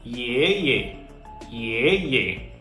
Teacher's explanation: Okay, notice the difference. Okay, in the first syllable, our voice was rising. Ye. In the second syllable, our voice was neither falling nor rising. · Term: neutral tone